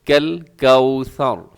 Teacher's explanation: آخر میں را ہے، را موٹا پڑ جائے گا، اسے کوثر نہ بولیے گا، یعنی سین نہیں ہے، یہاں پہ ثا ہے، سیٹی کی آواز نہ ہو